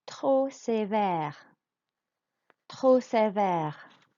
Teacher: So trop, you realize you don't say the P at all.